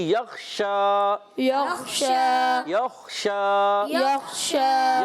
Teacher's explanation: شین پر کھڑا زبر ایک الف کھینچ کر ادا کریں گے. شین کی ادائیگی ہوتے ہیں زبان کے درمیان، اوپر تالو کے درمیان سے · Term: تفشی